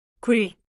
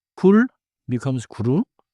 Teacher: End with your tongue touching, but no extra vowel.